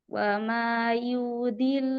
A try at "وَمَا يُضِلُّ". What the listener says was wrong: ইউদিল্লু কি হয়েছে বলেন? হ্যাঁ ইউ বড় হয়ে গেছে। ওয়ামা ইউদিল্লু বিহি, বড় করে।